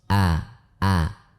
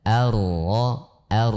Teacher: Hamzah wasal atau Alif kemudian membaca ro dengan tasdid maka kita baca awal dengan tipis